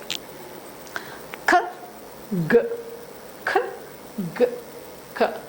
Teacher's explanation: or back part of the mouth and abstracting the air but sound comes like an explosion that's why it is a plosive